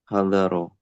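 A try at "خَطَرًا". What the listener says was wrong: Ini kho, bukan ha. Khotoron.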